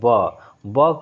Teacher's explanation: ब कहने पे हमारा ओष्ठ क्या हो रहा है? ओष्ठ सट रहा है।